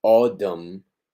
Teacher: Recuerden que la T entre vocales suena como una R, pero es simple percepción de nosotros, es en realidad una D